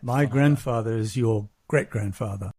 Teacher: you notice how he goes up on the great.